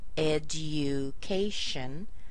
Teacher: the D here is followed by a U sound. It's not written there, but there's actually a Y sound. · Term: J sound